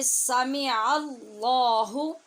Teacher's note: سامع اللہ، لام پر ہے، سامع اللہ، سامع اللہ نہیں پڑھنا، اللہ یعنی عین کو حمزہ نہیں بنانا اور لام کو باریک نہیں کرنا